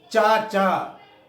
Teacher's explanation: इसे कहेंगे च, छ, ज, झ, इया। चाचा अगर कहेंगे तो जबान, हमारी जबान का अग्रभाग जो है तालु में जाकर के टकराएगा।